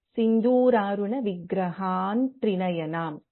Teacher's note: ವಿ have ಅನುಸ್ವಾರ followed by ತ and the fifth letter of ತ ವರ್ಗ ಇಸ್ ನ ಸೊ ವೀ can chant this as ಸಿಂಧೂರಾರುಣ ವಿಗ್ರಹ ತ್ರಿನಯನಂ ಸೊ ದಿಸ್